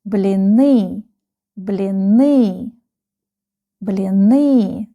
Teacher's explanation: The last syllable is stressed.